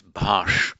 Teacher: it's bhash with the retroflex sh, and so comes bhas